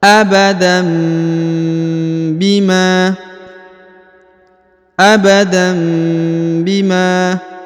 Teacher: jadi ditahan lalu didengungkan ya dua harakat ditahan lalu didengungkan dua harakat